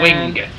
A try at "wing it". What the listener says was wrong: you you pronounced the G heavily